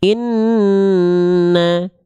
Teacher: dan huruf mim bertasydid ketika dua huruf ini bertasydid mereka hanya dilafazkan dengan cara ditahan dua harakat dengungnya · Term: ghunah